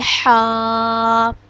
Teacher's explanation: حا حلق کے درمیانی حصہ سے ادا ہوگا اور اس کو ہم ایک الف کے برابر لمبا کریں گے، حا۔